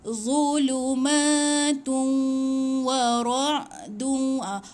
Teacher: Tanwin ni 2, bila bertemu dengan waw masukkan dekat waw tu. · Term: idgham bi gunnah